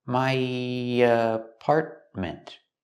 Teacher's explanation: When I link my to apartment, we have the y sound, just a little bit.